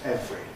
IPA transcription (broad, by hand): ˈevri